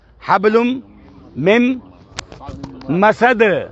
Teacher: دال بھی جد خطب ہے نا، دال بھی ہے نا اس میں، تو دال پہ بھی آواز باؤنس کر رہی ہے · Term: قلقلہ